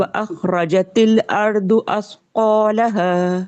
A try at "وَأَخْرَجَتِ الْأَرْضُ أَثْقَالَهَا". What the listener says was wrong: آپ کا دعات پتلا ہو گیا، آپ کا را بھی پتلا ہو گیا.